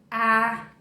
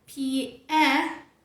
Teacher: você vai fazer um som de E, mas vai abrir bem a sua boca. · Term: som A de cat